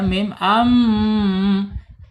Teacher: Mim makhrajnya ada di asyafatain yang pertama dua bibir. Kemudian yang kedua ada di alkhais. rongga hidung ya.